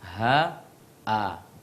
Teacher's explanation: Huruf ha dengan huruf hamzah sama tempat keluarnya, yaitu pangkal tenggorokan paling bawah.